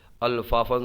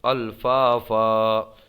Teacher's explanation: دیں گے کیسے الفافن سے الفافا کیونکہ یہ وقف کا قاعدہ کلمے کے آخری حرف پر دو زبر کی تنوین ہو اس پہ وقف پڑھیں گے تو اس کو ایک الف سے بدل دیں گے